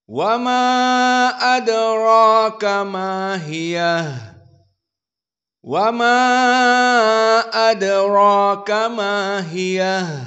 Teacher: Maka dibaca dengan tawassut majaiz munfasil bila al-imalah al-kubra wala al-imalah as-sugra.